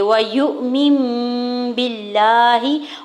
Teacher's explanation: چھوٹی میم ہے اور اگلا حرف با ہے، تو یہاں پہ نون کی آواز کو میم میں بدل کے پڑھیں گے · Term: اقلاب